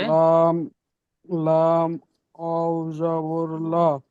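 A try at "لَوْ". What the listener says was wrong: লা নই, লাউ। জি, আরেকবার বলেন লা। লামটি আরেকবার বলেন, লাম ওয়াও জাবার লাউ।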